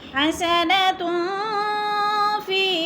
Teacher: اسوتن حسنتن، تن پہ جو ہے دو پیش تنوین، فا حروف اخفا میں سے آ گیا ہے تو ادھر اخفا کریں گے، آواز کو ناک میں چھپا کر پڑھیں گے